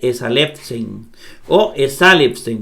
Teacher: La sigma va a sonar como S, la epsilon como E y la ni como N. Ahí dice esalepsen o esalepsen porque el acento está en sa.